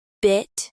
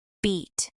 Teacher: Another example is the vowel in bit versus beat. In bit, the tongue is slightly lower and the vowel is shorter. In beat, the tongue is higher and the vowel is longer.